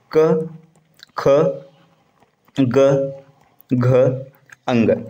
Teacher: अब इनका उच्चारण स्थान जो होता है ना, क वर्ग का होता है कंठ